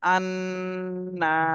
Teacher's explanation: হরকতের বামে নুনে তাসদিদ এখানে ওয়াজিব গুন্না করতে হবে